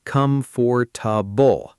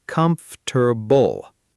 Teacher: A lot of learners say all four syllables clearly, com-for-ta-ble. But native speakers actually compress it into three sounds